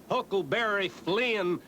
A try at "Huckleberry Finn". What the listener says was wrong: Finn! Finn! He was Huckleberry Finn, not Flynn. Ain't it the decent thing to pronounce the poor dead loafer's name right?